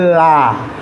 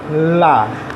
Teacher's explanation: a língua ela vai descer para poder que o ar saia e aí eu pronuncio a vogal A